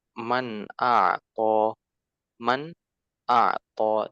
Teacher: Jadi jelas nunnya, ya. Jangan sampai didengung misalkan ya tidak seperti itu, jelas.